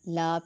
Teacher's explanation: ایک الف کے برابر لمبا ہوگا، لام کو موٹا نہیں کیا جائے گا۔ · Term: الف مدہ